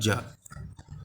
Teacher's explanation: तालव्य व्यंजन कौन कौन से होते हैं, तालव्य व्यंजन का चा वर्ग, चा वर्ग जो होता है वो होता है तालव्य व्यंजन, तालु से, चा वर्ग को तालु से बोलते हैं